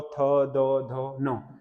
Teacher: उसके बाद अगला होता है दंत्य, दंत्य मतलब जो दांत को टच करते हैं